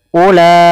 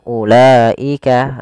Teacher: Yaitu ada mad tabi'i pada lafal la bertemu dengan hamzah setelahnya, yang mana hamzah tersebut pada satu kata. Panjangnya berapa harokat sama dengan mad wajib muttasil? 4 sampai 5 harokat.